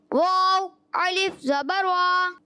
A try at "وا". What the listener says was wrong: واو موٹا نہیں ہونا. واو الف زبر وا. الف میں عین نہیں آنا چاہیے. الف الف, ٹھیک ہے.